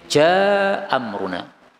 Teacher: ja dua harakat kemudian amruna nah lebih ringan karena hamzahnya dihapuskan